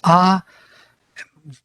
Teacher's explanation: no tongue no lips no nothing is involved only vocal chords are sounding the sound